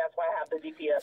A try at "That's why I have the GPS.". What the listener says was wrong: First of all, take the bass out your voice. A little anger. Change your tone. I want you to be happy as if though Mr. Marcus was sitting next to you.